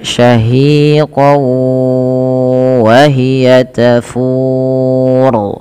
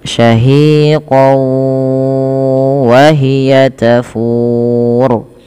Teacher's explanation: kemudian setelah itu ditahan dengan gunah maka dinamakan dengan idgam bunah Idgham artinya memasukkan yang dimasukkan di sini adalah tanwinnya kepada huruf wau kemudian ditahan disertai dengan gunah